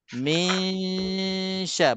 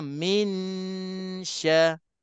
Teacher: Belum habis lagi 2 harakat, bibir mulut saya dah berubah daripada dengung dan dah standby tepi lidah depan ini nak sebutkan huruf shin. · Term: dengung ikhfa